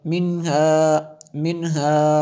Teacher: وَإِنَّ، نون مشدد ہے اس لیے غنہ ہوا، منہا نون ساکن کے بعد ہا حروف حلقیہ میں سے ہے، اس لیے یہاں پہ غنہ نہیں ہوگا